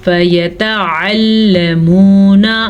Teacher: عین کو واضح کریں گے. لام کو کھینچ کے نہیں پڑھیں گے کیونکہ لام پہ زبر ہے. واو مدہ کو کھینچ کے پڑھیں گے